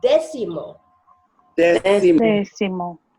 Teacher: séptimo and décimo, the stress is on the first syllable. That's what the accent mark has involves.